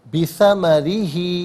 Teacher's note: وَأُحِيطَ بِثَمَرِهِ، ثمری میں را کے نیچے زیر ہے، اسے باریک کر کے پڑھیں گے